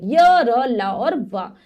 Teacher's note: तो जब हम इनका अंतःस्थ व्यंजनों का उच्चारण करते हैं तो जो हमारी जीभ है किसी भाग को पूरी तरह नहीं छुएगी, हल्का सा उसके पास आकर वापस आ जाएगी